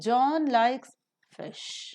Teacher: tonic syllable which is called as nucleus so John likes fish you just fall down and give a falling tone to it because it's an ordinary utterance without any implications